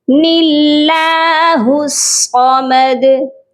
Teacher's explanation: نون کے نیچے زیر تھی، اسی لیے جب ہم نے اس کو اللہ کے لام کے ساتھ ملایا تو اللہ کے لام کو باریک کر کے پڑھا گیا